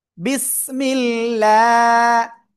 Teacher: আল্লাহ শব্দের লাম এর ডাইন পাশে যদি জের আসে, এই যে জের আসছে না, তো আল্লাহ শব্দের লাম আপনার কি করে পড়তে হয়? চিকুন করে পড়তে হয়।